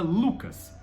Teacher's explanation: o L, a gente joga a língua lá no dente da frente